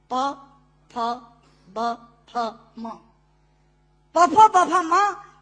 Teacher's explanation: दोनों होंठ मिलाकर बोले जा सकते हैं। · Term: ओष्ठांग